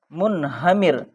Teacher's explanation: منہمر، میم نون پیش من، ہا زبر ہا، منہا، میم را زیر مر، منہمر. یہاں رائے ساکنہ سے پہلے کسرہ آیا ہے اس لیے یہاں پر رائے ساکنہ کو باریک پڑھا جائے گا. اور یہ دیکھیے نون ساکن ہے، یہاں پر اظہار والا رولس ہے.